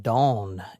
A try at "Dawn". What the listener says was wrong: Did you say dong? It doesn't sound like you're saying dawn.